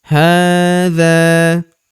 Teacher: Hadza huruf ha kita panjangkan dua harakat karena terdapat tanda alif kecil di atasnya